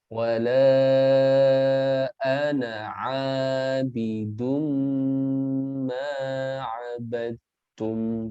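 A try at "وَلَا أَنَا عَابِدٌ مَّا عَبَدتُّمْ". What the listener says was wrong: Kurang sedikit lagi. A-nya sudah panjang, sudah bagus. Sekarang dengung pada dumma.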